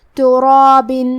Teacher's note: من تراب، کلمت تراب میں کیونکہ یہاں را پہ زبر ہے لہذا یہاں را کا حکم ہے تفخیم، تو ہمیں حرف را کو اور اس کے بعد مد الف کو دونوں کو تفخیم سے مطلب بھاری آواز میں پڑھنا ہے